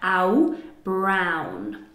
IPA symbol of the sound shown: au